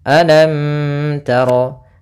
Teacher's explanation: Nah, jangan sampai kita menahan mimnya di sini karena di sini ada hukum tajwid berupa izhar syafawi yang mana mimnya harus dibaca dengan jelas, tidak boleh ditahan